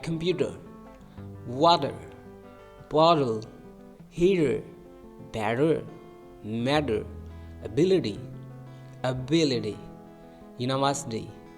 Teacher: y we it becomes like a soft D or flap t a flap which means the tongue touches the roof of the mouth quickly